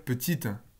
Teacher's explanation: Quand vous dites petite, généralement, ça ne se termine pas vraiment par une consonne. Il y a une toute petite voyelle schwa qui apparaît derrière.